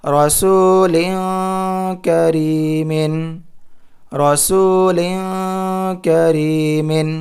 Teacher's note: یہاں پر اخفا کریں گے لام دو زیر لین میں، کیونکہ تنوین کے بعد کاف حروف اخفا میں سے آ رہا ہے۔